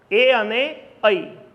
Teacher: કંઠ અને તાલુ બે ભેગા થઈને એને ઉચ્ચારે છે, અને ઐને પણ એ બે ભેગા થઈને ઉચ્ચારે છે. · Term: મિશ્ર સ્વરો